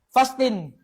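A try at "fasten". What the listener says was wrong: Hindi yan fasting, hindi. Dapat abasa dyan silent T. Silent T. Magiging fasin. Oh, fasin.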